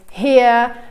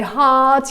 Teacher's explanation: So like in front of vowels, when there is no H sound in English, many Italian speakers tend to insert the H. So for example, like instead of ear, they tend to say here.